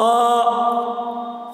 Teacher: खो भी हलक से अदा करते हैं